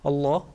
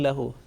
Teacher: Okay, you all three, if you can make a difference, if you can recognize the difference between a thick letter, thick mushaddad lam, Allah, and yakul lahu, softly